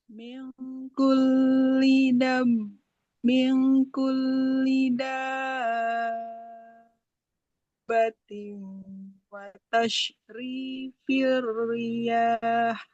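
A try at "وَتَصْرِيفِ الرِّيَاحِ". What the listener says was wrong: Huruf sotnya jangan seperti shin, jangan watashri. Karena huruf sod itu satu makrojnya dengan sin. Ujung lidah menempel ke ujung gigi di bawah.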